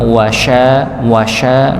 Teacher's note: Wasya bukan wasa tapi wasya dengan syin dan tidak perlu untuk dimonyokkan ya engak perlu wasya waanya wasya wasya misalnya gitu tidak nggih tidak dimonyongkan wunya saja monyong wa syinnya tidak perlu untuk dimonyongkan